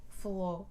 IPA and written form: fɐlo (falou)